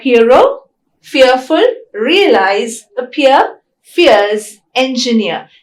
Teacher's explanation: Ear is a centering diphthong. It is a centering diphthong because the tongue glides towards the central vowel A.